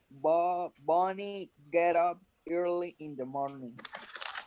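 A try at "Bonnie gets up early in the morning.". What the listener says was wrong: Pronounce the final S because Bonnie is the So you say gets. Bonnie gets up early in the morning. Gets up early in the morning. Gets up.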